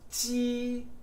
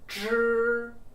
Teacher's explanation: your tongue is more forward than the English J, and for the ZH, it's curled back retroflex, further back than for the English J.